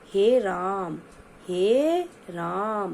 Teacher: उच्चारण में एक मात्रा का तीन गुना समय लगता है